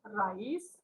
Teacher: Las vocales están seguidas, pero no forman parte de una sola sílaba porque no se pronuncia con una sola emisión de voz. Vocal abierta átona más vocal cerrada tónica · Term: hiatos